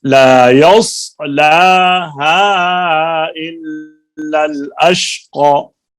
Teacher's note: صاد میں زبان کو اوپر اٹھاؤ، صاد کی آواز موٹی ہے